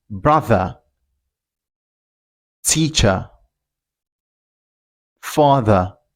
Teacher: If you want to pronounce this word in Britain, you don't pronounce the R, just say brother, teacher, father.